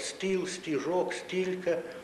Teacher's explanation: людина, яка природно говорить українською мовою, вона у такій позиції, наприклад, стіл, стіжок, стільки т вимовляється т як тверде. Тут елементарне правило: якщо і пішло із о давнього, то воно залишається попереднє твердим.